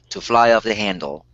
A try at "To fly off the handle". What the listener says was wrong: To fly off the handle. Good.